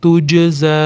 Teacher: alif ustida to'lqin bilan kelgani uchun ko'proq cho'zamiz